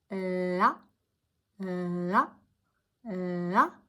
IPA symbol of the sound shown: l